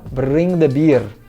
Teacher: E no sotaque escocês, a gente vai transformar esse R no nosso R vibrante R, assim, bring the beer, bring the beer. Não precisa forçar muito esse R falando bring the beer para zoar, tá? Não é para zoar assim também. É só vibrar um pouco esse R, bring the beer, traga a cerveja, ok?